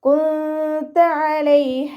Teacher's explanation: നൂൻ സാക്കിനയെ മറച്ചു വെച്ചിട്ട് മണിച്ചോതി കൊടുക്കുക കേട്ടോ. നൂനിൻ്റെ സൗണ്ടിനെ വ്യക്തമായിട്ട് കേൾപ്പിക്കാതെ മറച്ചു വെക്കുകയും ചെയ്യുക, അതോടൊപ്പം തന്നെ മണിക്കുകയും ചെയ്യുക. കുന്ത അലൈഹ, നമ്മുടെ നാവിനെ മുകളിൽ തട്ടിക്കാതെ നോക്കുക കേട്ടോ.